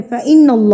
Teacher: اللہ کو پر پڑھا کیونکہ اللہ سے پہلے زبر تھی